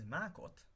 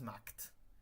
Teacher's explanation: the base form is Mákot, but when you conjugate it with anything really, it becomes Mákt